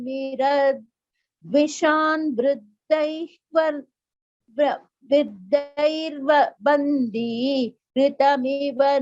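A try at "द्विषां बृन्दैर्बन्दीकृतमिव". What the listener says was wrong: The last line, Bhagini, there was a mistake. Dvisham Brundair Bandi Kritamiva. That entire word should be chanted together. We should not pause after Bandi and say Kritamiva. Dvisham Brundair Bandi Kritamiva Navinarka Kiranam.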